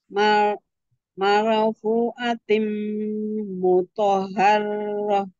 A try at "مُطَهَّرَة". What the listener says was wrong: Jangan mutoharoh. Rohnya tidak ada tasdidnya. Mutoharoh.